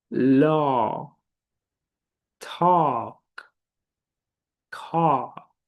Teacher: my mouth remains both open, and the lips rounded in an O shape.